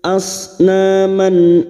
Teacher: tanwin yang bertemu dengan enam huruf ini termasuk Hamzah termasuk Hamzah maka bunyi fathah tanwin dibaca jelas tanpa mendengung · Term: Idhar halq, idhar halqi